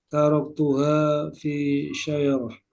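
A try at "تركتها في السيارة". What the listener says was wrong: pakai sin biasa. Fis sayyarah.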